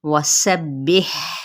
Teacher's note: سین کی سیٹی واضح کرتے ہوئے اس کو با کے ساتھ ملائیں گے، اور ہا پہ ہمز کریں گے کیونکہ یہ ساکن بھی ہے، وسبح بالعشی، ٹھیک ہے، بالعشی والابکار۔